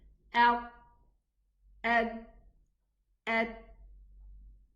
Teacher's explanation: The letter sound can be heard after the hardness ends, after the shidda.